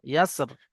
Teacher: পড়ার সময় ইয়াস রি পড়বো না, যেহেতু আমরা দাঁড়াচ্ছি ওখানে, তো ইয়াসর নিচে জেরটা উচ্চারণ হবে না। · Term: ওয়াকফ